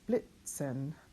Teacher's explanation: Blit, and then if you remember right, a Z is pronounced TS, Blitzen. I'm putting that colon just to kind of hear the double like we had with Italian, but it's not entirely necessary in your IPA.